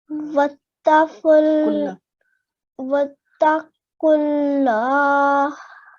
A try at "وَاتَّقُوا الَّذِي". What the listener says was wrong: Make sure not to make the lam long. It's just a fatha. So it's just kulla.